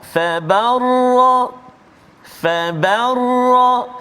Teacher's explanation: Jadi ba tu tipis, dia tak tebal. Yang tebal ra.